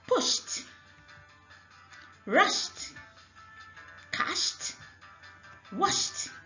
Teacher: If a verb ends in sh and you add ed to it, the ed becomes t.